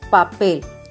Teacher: La mayor intensidad de la palabra se encuentra en la sílaba pel. Palabras graves o llanas. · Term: palabras agudas